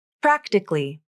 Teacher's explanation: The second A is dropped from the pronunciation, and it is pronounced as 3 syllables. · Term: vowel syncope